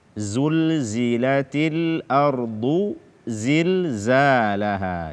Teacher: zai ini semakhraj dengan sin dan sad, dia adalah salah satu dari huruf as-safir yang tiga.